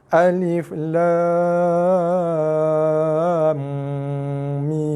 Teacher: 6 harakat lam, dengung 2 harakat, tutup mulut, bibir kacip, tekan, mim 6 harakat. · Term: Idgham ma'al gunnah